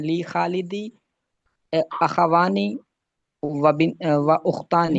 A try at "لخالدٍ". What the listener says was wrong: لی نہیں، لی نہیں، لے لے خالد. لخالد.